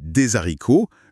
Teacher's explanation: Le H aspiré bloque la liaison. On dit des haricots, jamais des haricots.